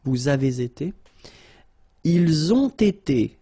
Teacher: you get first the liaison z, and then you get the t